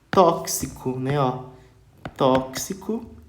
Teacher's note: vai ter som do qu de KS